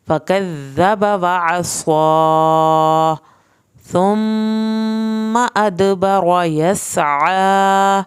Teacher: सा को ज़बान की नोक से पढ़ना है, मीम की शद पे एक अलिफ के बराबर देर लगेगी।